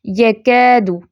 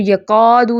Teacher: اب کاف جو ہے باریک کاف کے بعد الف مدہ آیا ہے تو یہ کاف لائٹ پڑھا جائے گا، ٹھیک ہے، یکادو، اس کو یقادو نہیں پڑھیں گے، ٹھیک ہے۔